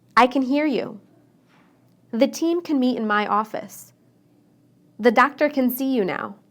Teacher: when I say can inside the sentence I shortened the a